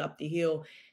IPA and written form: ɒp di hɪjəl (up the hill)